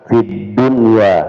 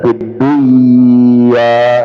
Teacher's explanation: Jadi harus di diizharkan fid dunya bukan fiddunya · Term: Izhar hakiki